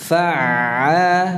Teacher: Ketika mengucapkan ain, pita suara itu masih membuka.